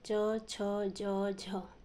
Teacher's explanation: आगे है स्पर्श संघर्षी। जिन व्यंजनों के उच्चारण में कोई दो उच्चारण अवयव एक दूसरे को स्पर्श करके प्रश्वास के निकलने में आंशिक रुकावट उत्पन्न करते हैं और जिससे निकलने के लिए कुछ संघर्ष भी करना पड़ता है, उन्हें स्पर्श संघर्षी कहा जाता है।